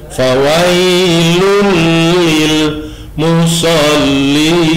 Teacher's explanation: Idgham itu artinya memasukkan, lun itu masuk ke suara lam, kemudian melebur, kemudian bersuara lam. Bila guna, tidak berdengung. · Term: idgham bila guna